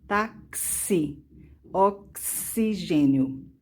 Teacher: Por exemplo, a palavra táxi e também a palavra oxigênio. Então, a letra X, nesse caso, está representando dois fonemas, o som de K e o som de S